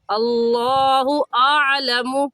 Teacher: लफ्ज़ अल्लाह को पुर यानी मोटा पढ़ेंगे, और मोटा करने का तरीका कि आपके दोनों होंठ गोल हो जाए